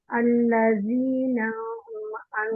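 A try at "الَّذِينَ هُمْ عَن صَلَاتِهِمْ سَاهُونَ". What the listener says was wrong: आपका लंबा हुआ, इसी को छोटा करें, अल्लज़ीना, बस ना ना।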